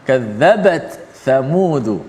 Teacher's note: Maka dia mencabar sedikit kerana bacaan imam kita Imam Hafs an Asim, riwayat imam kita yang kita baca di Malaysia, yang kita nak baca sama-sama ni, riwayat Imam Hafsun daripada Asim gurunya, membaca secara izhar, iaitu ta tu dijelaskan mati, dibunyikan mati. Sifat ta tu dibunyikan ketika mati dan disebut huruf tha pula selepas tu.